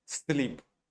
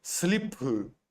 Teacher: they don't uh finish the words with consonant